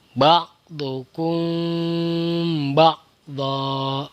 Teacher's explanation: Cara membacanya dengan menggunakan dengung, dengan menggunakan samar. Artinya bibirnya tidak boleh dirapatkan secara sempurna dan ditahan selama 3 harokat atau 3 kali hitungan. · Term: ikhfa syafawi